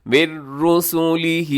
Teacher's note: مِن رُسُلِهِ نون ساکنی بعد را ہے، یہاں ادغام کیجیے گا بغیر غننے کے